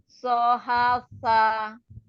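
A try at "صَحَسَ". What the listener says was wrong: Jangan ditekan ya, sa-nya jangan ditekan. Sa, ujung lidahnya ada di ujung gigi seri atas. Sa, atas. Dari atas, bagian atas.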